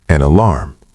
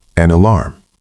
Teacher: It sounds like one word, an alarm.